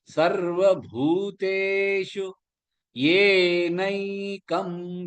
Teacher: ஏனை ரெண்டுமே நெடில் எழுத்துகள், நை ஐ அழுத்தி சொல்லணும்.